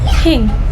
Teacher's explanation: cara pengucapannya lidah di antara gigi tanpa suara.